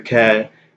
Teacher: I would expect to hear ka for qaf in like a village. I mean, it depends, but that tends to be the case.